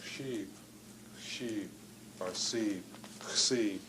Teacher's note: There's just no difference between the s and sh.